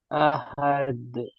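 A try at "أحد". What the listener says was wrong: জি, আহাদ হচ্ছে কেন? আহাদুন আছে, আহাদ হচ্ছে কেন? জি, এখানে দু পেশ আছে তাই এর উপরে থামছি, তাই এই হরফটাকে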